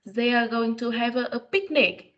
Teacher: we can do a rising tone in statement